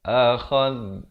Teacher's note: di hujung lidah keluar di antara 2 gigi, menyentuh 2 gigi di atas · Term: huruf zal